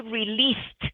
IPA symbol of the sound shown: t